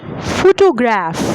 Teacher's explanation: The first syllable is being stressed.